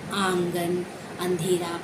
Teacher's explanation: यानी इसका उच्चारण नाक और मुंह से होता है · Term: चंद्रबिंदु